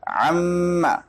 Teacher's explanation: اگر مدغم عین مدغم فی بن جائے مکمل طور پر تو اس کو ادغام تام کہا جاتا ہے، جیسے وقالت طائفہ، اب یہ تا سے بدل چکا ہے. عما یتساءلون میں عم دیکھیں نون میم سے بدل چکا ہے